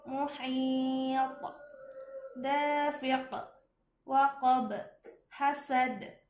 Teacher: qalqalahnya bertasydid dan diwaqafkan, berhenti, maka membacanya ditahan satu harokat, kemudian dipantulkan.